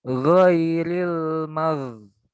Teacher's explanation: jangan terhenti ya karena sifatnya rokhawah ya. Rokhawah tuh mengalir. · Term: ghain sukun